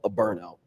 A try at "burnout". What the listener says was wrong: You're saying it too fast.